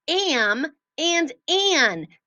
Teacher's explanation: the m sound and the n sound are called nasal sounds and they come more from our nose than they do from our mouth · they come more from our nose than they do from our mouth. So, when we say those sounds, and those sounds come after a short vowel like ah, it changes the way the vowel sounds.